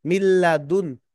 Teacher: মিল্লাদুন, মিম লাম জের মিল, নুন সাকিনের পরে লাম আসছে, নুন সাকিনের পরে লাম আসছে, এই যে উপরে তানবিনের পরে লাম আসছে, এখানে নুন সাকিনের পরে লাম আসছে, ঈদগামে বেলা গুন্নার হরফ, গুন্না ছাড়া মিলিয়ে পড়তে হবে।